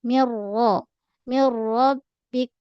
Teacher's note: Mim nipis dulu. Mi ra tebal terus · Masuk terus nun tu ke dalam ra tanpa dengung. Menekan pada ra sebab ada saddu. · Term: idgham bila gunnah